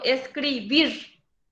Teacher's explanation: es una palabra aguda la misma cosa escribir yo digo escribir cargo la voz en la última sílaba